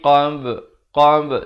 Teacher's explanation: qalqalah sughra. Ada pantulan di sini. Ba merupakan huruf qalqalah.